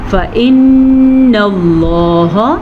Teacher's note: لفظ اللہ کو پر پڑھیں گے، لفظ اللہ سے پیچھے والے حرف پہ زبر کی وجہ سے